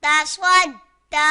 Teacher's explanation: تا زبر تا صاد، دال زبر صد تا صد، دال کھڑا زبر دا تا صد دا. یہاں صاد حروف مستعلیہ میں سے اسے پر پڑھیں گے، اور دال حروف قلقلہ میں سے اور یہ مشدد ہے تو اسے جماع کے ساتھ ادا کریں گے، اور یہاں بھی یا نہیں پڑھیں گے.